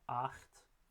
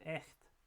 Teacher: So we have the tense low vowel, acht, and the mid-front lax vowel with echt.